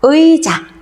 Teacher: 표기대로 이중모음을 살려서 발음합니다.